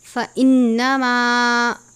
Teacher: نون مشدد ہے، غنہ کرتے ہیں